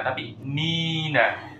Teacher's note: kalau mau disambung tapi nunnya tidak bertasdid